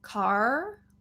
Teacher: tongue is going up to the roof of the mouth car the r is here with the tongue in the middle of the mouth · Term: r sound